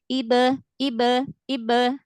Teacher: jadi udah syiddah dulu di makhraj huruf ba baru qalqalah.